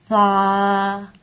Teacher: سا کو بھی ایک الف جتنا لمبا کر کے پڑھیں گے اور نرمی سے ادا کریں گے